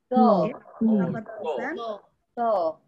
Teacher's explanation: Makhrajnya 2 sisi lidah.